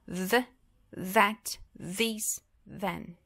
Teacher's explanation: Então, aqui, uma das primeiras regrinhas é que nessas palavras estruturais, no começo delas, quando aparece um TH, normalmente ele tem esse som de vibração da corda aqui, das cordas vocais